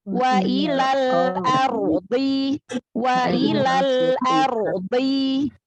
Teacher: Ro-nya juga kan di sini tafkhim ya, karena ro sukun sebelumnya fathah. Ya. Jadi tebalkan huruf ro sukunnya.